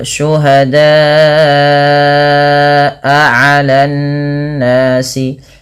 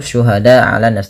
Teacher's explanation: panjangkan bunyi suara huruf da sepanjang empat atau lima harakat karena ia termasuk daripada bacaan mad wajib muttasil dan dia tidak boleh kurang.